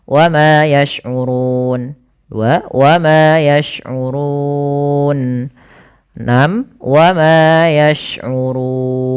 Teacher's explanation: panjangnya adalah kita boleh memanjangkan 2 harakat, boleh 4 ataupun boleh 6. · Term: mad arid lisukun